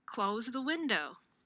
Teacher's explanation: a final fall in which the final pitch accent is scaled higher than any preceding accents